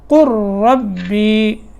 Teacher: قل ربی یہاں ہے قل اور اس کے بعد کیا ہے ربی، لیکن لام ساکن ہے، اس کے بعد جب را آ جاتا ہے تو لام ساکن نہیں پڑھا جاتا، بلکہ پہلے حرف کو پھر را میں جو ہے وہ ادغام، یعنی لام کو پھر را میں ادغام کر کر پہلے حرف کو را سے ملائیں گے. قل ربی جب ملا کے پڑھیں گے، یہاں اگر وقف کیا تو پڑھیں گے قل، ایسے قل، لیکن یہاں وقف نہیں ہے.